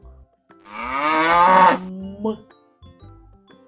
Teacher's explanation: м губки наші зімкнуті та без напруги повітря виходить через ніс звук м співати не можна тому що губи утворюють перешкоду повітря